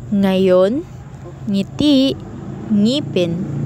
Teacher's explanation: sa bawat pagbigkas natin ng mga salita ng n at G ay nagiging isa ang tunog nito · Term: digrapo